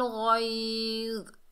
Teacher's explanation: गैन के ऊपर ज़बर, आगे या साकिन है, ये या लीन है, इसे नरमी और जल्दी से अदा करेंगे